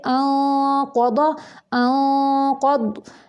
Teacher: نون ساکن کے بعد قاف آ گیا قاف پر حروف میں سے ہے اس لیے اخفا کو بھی پر کر کے نکالیں گے